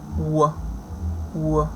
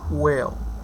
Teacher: w, w, which is voiced. Bilabial, glide